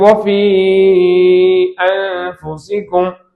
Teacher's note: வஃபி என்பது ஒரு சொல், அன்ஃபுசிக்கும் என்பது ஒரு சொல். முதல் சொல்லுடைய கடைசியிலே மத்துடைய எழுத்தும், 2வது சொல்லுடைய முதலில் ஹம்சாவும் இருக்கிறது. மத்துல் முன்ஃபசில், 3 அலிஃபுகள் நீட்டப்பட வேண்டும்.